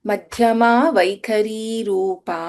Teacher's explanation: ಇನ್ ಮಧ್ಯಮ ಧ ಇಸ್ ಮಹಾಪ್ರಾಣ ಇನ್ ವೈಖರಿ ಖ ಇಸ್ ಮಹಾಪ್ರಾಣ